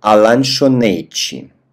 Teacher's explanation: На конце «т» у нас произносится как «чи».